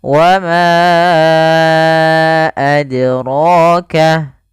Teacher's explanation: Nah, qalqalah ini artinya memantul. Maka huruf dal ketika dia sukun, dia harus ada pantulannya.